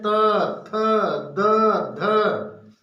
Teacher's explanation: तो आपकी जीभ कहाँ जा रही है? दांत को टच कर रही है